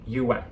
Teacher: there is a little w sound in between you and at